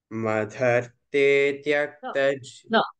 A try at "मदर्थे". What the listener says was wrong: म द अल्प प्राण थ महाप्राण मदर्थे no first one is correct म द अल्प प्राण नॉट म ध मदर हे नॉट दे